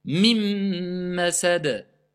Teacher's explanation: Je passe, dès que j'ai dit la voyelle, la première voyelle, mi, je passe directement à la lettre qui vient après le nun. Parce que le nun, il a été mangé, il a été assimilé. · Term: al-idgham